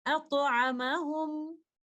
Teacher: آپ میم ساکنہ کو اظہار کے ساتھ پڑھیں گے کیونکہ بعد والا لفظ تو ہم پڑھ ہی نہیں رہے